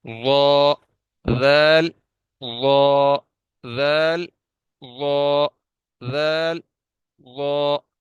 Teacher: تا، ذال اور وا کی ادائیگی ایک ہی جگہ سے ہونی ہے. ذال کو باریک کر کے پڑھیں گے، وا کو منہ بھر کے پر کر کے پڑھیں گے